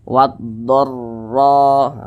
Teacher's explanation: dibaca tebal dibaca Tir karena dia memiliki tanda baca fathah sehingga ketika Kita mengucapkannya itu pangkal lisan kita atau Pangkal lidah kita itu naik terangkat ke atas ditebalkan